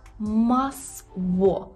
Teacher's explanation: У польській взагалі нема твердого звука л. Це є в. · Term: губний звук